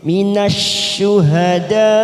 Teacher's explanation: syuhada ada mat yang bertemu dengan hamzah dalam satu kalimat, mat wajib mutasil kita panjangkan 5 harokat